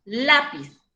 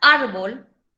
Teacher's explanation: tenemos tres ejemplos lápiz yo digo lápiz no digo lápiz entonces se carga la voz en la penúltima sílaba y la palabra lápiz termina en zeta no es ninguna vocal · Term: palabra grave